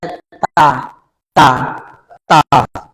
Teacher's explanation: তা জিহ্বার উপরে দাঁতের গোড়ায়, তা তা তা। সা দুই দাঁতের আগার জিহ্বার আগায়, তা।